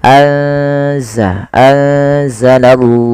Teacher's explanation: memasukkan nunnya atau menyamarkan nunnya kepada huruf zai. Ya, anza langsung kepada makhraj daripada huruf zai.